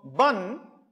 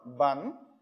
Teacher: bun, meaning preterm, is realized with the high tone, bun, meaning ta is realized with a low tone.